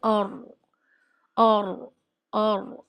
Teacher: را زبان کی نوک اور اوپر کا تالو، یہاں سے زبان ٹچ ہوتی ہے اور کچھ گھوم بھی جاتی ہے، کچھ پشت یا بیک آف ٹنگ بھی شامل ہو جاتا ہے، اور کی ادائیگی میں۔ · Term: را کا مخرج